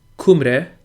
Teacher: the Y in Cymre represents a schwa, I guess, the mid-central vowel on the IPA chart, which could possibly be anglicized or sexicized as U.